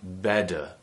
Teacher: in other accents which might be considered to be less rp sounding you would hear better where the t is actually replaced with a d sound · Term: flap